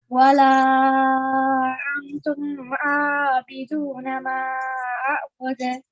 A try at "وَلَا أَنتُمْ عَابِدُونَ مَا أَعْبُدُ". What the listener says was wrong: Okay, so nun sakin sound should not be that evident. It should be antum, not antum.